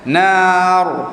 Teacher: Ra tu tebal kerana sebelumnya huruf alif, huruf mad, dan sebelumnya huruf nun yang berbaris atas.